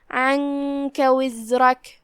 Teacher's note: اس کے بعد حرف الکاف ہے، کاف حروف الاخفاء میں سے ہے، لہذا ہم نون کو بغیر ظاہر کیے ہوئے لیکن غنہ کے ساتھ یہ حکم کو ادا کریں گے